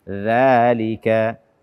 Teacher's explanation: Ujung lidah kita bersentuhan dengan ujung gigi seri atas.